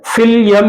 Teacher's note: मीम मुशद्दद है तो गुन्ना करते हुए फिल यम, नाक में घुमाते हुए रखेंगे